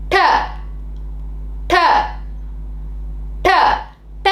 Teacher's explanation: நாக்கை சிறிது மடித்து அன்னத்தின் முன்பகுதியை தொடுமாறு வைத்து உச்சரித்தால் ட வந்துடும் ட இப்ப இப்போ நீங்க நாக்கை சிறிது மடிக்கிறீங்க மடித்து அன்னத்தின் முன்பகுதியில் படுமாறு